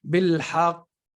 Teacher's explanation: the difference with the shadda is what happens is you're spending more time on the qaf, right? بالحق, because there's a shadda on it.